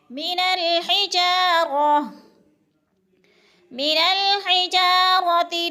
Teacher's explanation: رو کو پر کر کے پڑھیں گے، رو کے اوپر زبر ہے